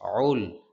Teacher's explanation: কণ্ঠনালীর মধ্যখান থেকে আইনের উচ্চারণ হয়